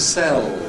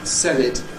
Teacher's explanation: ‘I’m going to sell [seɫ]’ Dark /l/. ‘Sell [sel] it’ Clear /l/.